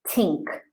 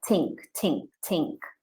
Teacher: if we don't extend our tongue the sound becomes tink